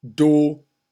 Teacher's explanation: We don't really pronounce the N when it follows an I because it's a nasalized sound.